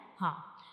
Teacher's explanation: تو ہا جو یہ ایک حروف ہلکی ہے، اور یہ ہمارے حلق کے یعنی گلے کے بالکل نیچے والے حصے سے ادا ہوتا ہے